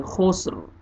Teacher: रा को पुर करना है वक्फ की सूरत में, क्योंकि रा साकिन है वक्फ की सूरत में।